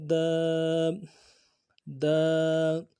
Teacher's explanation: الف مدہ ہے، ایک الف دال میں کھینچیں گے. دال الف زبر دال دا.